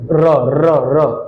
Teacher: जो कंपन कर रही है दो तीन बार जा रही है उसको कहते हैं जीवा का लुंठन करना, का करना लुंठन करना या लुढ़कना। · र को उच्चारण करते समय आपकी जिह्वा बहुत ज्यादा कंपन करेगी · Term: लुंठित वर्ण, प्रकंपित वर्ण